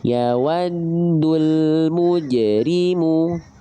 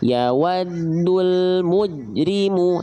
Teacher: Harusnya huruf jimnya dipantulkan. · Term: sifat qalqalah